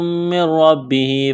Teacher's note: نون ساکن کے بعد را ہے، را کے اوپر تشدید ہے تو نون کو را کے ساتھ پلس کرنا ہے، غنہ نہیں کریں گے